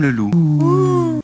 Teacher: pour qu'il fasse un ou à partir du e vous arrondissez les lèvres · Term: le son ou